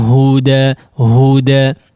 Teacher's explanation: Huda khalis dia murni, dia dikeluarkan dari al-jawf ya.